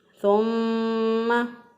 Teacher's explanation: सुम्मा, इसके ऊपर देखें मीम मुशद्दद है। मीम मुशद्दद और नून मुशद्दद ये दो हरूफ ऐसे हैं कि जिन पर गुन्ना करना ज़रूरी है। गुन्ना कहते हैं नाक में आवाज़ ले जाने को।